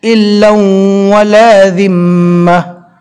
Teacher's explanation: لام کی تنوین کو واو سے ملانا ہے، اور جب تنوین کو ملا کر پڑھتے ہیں تب ایک ہی زبر پڑھا جاتا ہے، الا ولا ذمہ۔